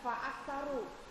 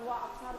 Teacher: Fa yang ada di awal kalimat itu Ibu terkadang suka mengucapkan seperti wau ya Bu ya faaksaru Fa bukan wa aksaru tapi FA faaksaru